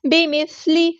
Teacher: سا کو باریک نرمی سے ادا کریں گے، لام کی زیر کو لمبا نہیں کریں گے